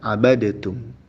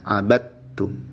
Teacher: Seharusnya dibaca abadtum. Ain ba langsung ke ta, huruf dalnya lebur. Karena pada ayat tersebut diharuskan untuk melebur.